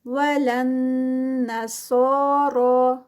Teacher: نون مشدد غنہ ہے، صاد heavy 2 counts کا stretch, را ہیوی اور ساتھ میں 2 کاؤنٹس کا اسٹریچ.